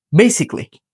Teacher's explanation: বিতে একটা চাপ দিতে হবে, অর্থাৎ স্ট্রেস দিয়ে বলতে হবে